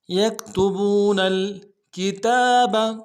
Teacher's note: ساتھ ملانا ہے، واو مدہ ایک مقدار میں کھینچیں گے، بو نون کو لام کے ساتھ ملائیں گے، لام ساکن میں غنہ نہیں ہوگا